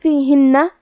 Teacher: یہاں حرف النون پہ تشدید ہے تو ہمیں 2 حرف کے برابر نون کو پڑھنا ہے، کیونکہ تشدید کی اصلیت 2 حرف ہے، جیسا کہ یہاں حرف النون ہے تو یہ 2 نون ہے، نون ساکن اور نون متحرک۔